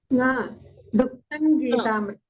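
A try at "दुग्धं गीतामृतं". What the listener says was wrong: So dugdhang, not na, ng. Dugdhang Gitamritam. Dugdhang, makara should come.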